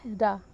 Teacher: ऐसा वर्ण जिसका उच्चारण करते समय जीभ मुंह में घर्षण करती रहती है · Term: लुंठित